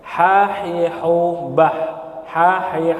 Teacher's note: [Musik] [Musik] Iya haah haah lihat e posisi giginya Di mana posisi lidahnya tidak bersentuhan dengan langit-langit sama sekali